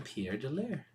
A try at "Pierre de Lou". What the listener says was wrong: Pierre de Lou. Pierre. There's no R.